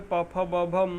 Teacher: पांचवें वर्ग में प फ ब भ म आता है, जिसे ओठ से बोला जाता है, इसे प वर्ग कहते हैं।